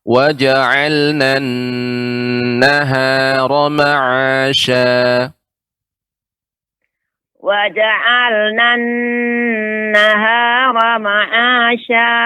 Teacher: untuk nun yang bertasydid agak diperlama Ibu. Ya, gunnahnya.